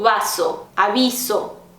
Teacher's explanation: vai ter gente que vai fazer mais parecido com o som de V ou de B, esse intermediário entre V e B, eu costumo fazer o parecido com o intermediário aí.